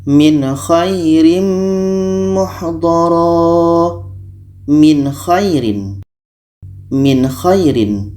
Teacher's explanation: dibaca jelas Nun jelas k jelas dan tidak ada dengung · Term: izhar halq, izhar halki